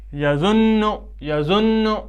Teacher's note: جب ہم اس تشدید کو پڑھتے ہیں اس وقت پڑھنے میں ایک قسم کا جھٹکا محسوس ہوتا ہے